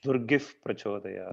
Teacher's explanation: It is not actually fa. It is the lip holding the pa. Pa is a labial, right?